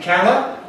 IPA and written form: ˈkælə (colour)